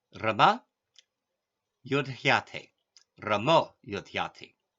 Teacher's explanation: one important exception is the ah becomes o if voiced consonant follows.